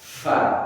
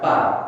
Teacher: bibir bawah bertemu dengan gigi seri atas